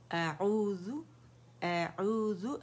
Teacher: हमज़ा फतह आ है तो ये अक्सुल हलक से अदा होगा।